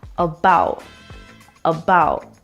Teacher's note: So it sounds like dabout, dabout. Then the final T in about is pronounced with the stop consonant